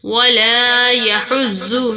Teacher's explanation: لام کو تھوڑا سا کھینچا ایک الف کے برابر جتنا